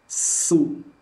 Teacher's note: Huruf sin tipis, tapi dia memiliki sifat rokhwah, maka jangan langsung u bibirnya.